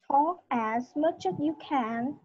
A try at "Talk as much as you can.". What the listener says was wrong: Vẫn nhanh. Thiếu chữ Z sau chỗ chữ S.